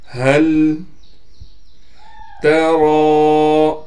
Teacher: را پر کڑا زبر ہونے کی وجہ سے را کو ایک الف کی مقدار کھینچ رہے ہیں